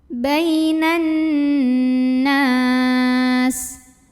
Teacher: Nunnya adalah gunnah musyaddadah karena nun bertasydid. Maka cara membacanya didengungkan nunnya, ditahan bunyi an-nya kurang lebih 2 harokat.